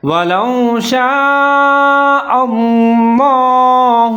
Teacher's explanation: لفظ اللہ کو موٹا پڑھنا ہے